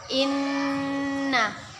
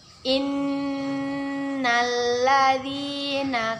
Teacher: Ketika ada nun bertasydid, maka hukum bacaannya gunnah. Kita dengung dan kita tahan dua harkat sampai lima harkat. Innalladzina kafaru sawa'un alaihim.